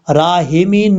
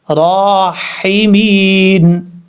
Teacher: خیر الرا، حاضر حی، میم یازر می، نون زبر نا، راحمین، یہاں پر جو ہا ہے یہ ہا بھی باریک ہے، اس کو بھاری ساؤنڈ کے ساتھ نہیں پڑھنا